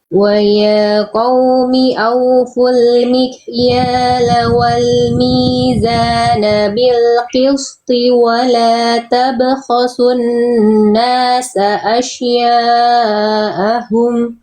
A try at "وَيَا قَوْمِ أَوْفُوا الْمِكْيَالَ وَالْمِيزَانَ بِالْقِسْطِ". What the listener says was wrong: Tonya tebalkan bil qisti. Nah, tonya yang ini kurang tebal. Pangkal lidahnya kurang naik, ya. Fokus pada huruf tonya. Nah, tebalkan tonya seperti ini ya.